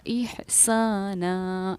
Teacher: اس کے بعد یہ سمجھیے کہ میں نے احساناً پر جب میں نے وقف کیا تو اس کو پڑھا احسانا، کیوں؟ کیونکہ دو زبر پر جب وقف کیا جاتا ہے تو ایک زبر کے ساتھ الف پڑھا جاتا ہے